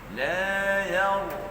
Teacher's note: Ra mati sebelumnya baris di atas, maka kena tebal ra itu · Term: ra yang mati